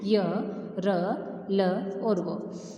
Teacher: इनका उच्चारण जीभ, तालु, दांत और होठों के निकट आने से होता है। सांस में रुकावट कम होती है। ठीक है, जब हम वर्ण का उच्चारण करते हैं तो हमारी जो सांस की रुकावट है वह कम होती है। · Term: अंतस्थ व्यंजन